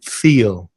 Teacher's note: The other verb, to feel, double E. So feel is a long vowel sound, E, the same as in sheep or see or me